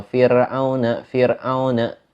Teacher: Itu pada hukum tarkik yang dibaca tipis. Intinya ketika kita baca tipis itu ro-nya itu enggak ditebelin bacanya, tapi ditipiskan saja.